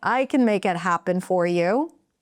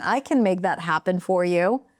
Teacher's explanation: Notice that little lift in pitch in the beginning.